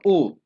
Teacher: जब इसकी आवाज निकालेंगे तो आपके दोनों होठ ऐसे ओ के आकार के होंगे